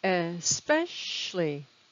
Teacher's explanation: So it's a three-syllable word with the stress on the second syllable.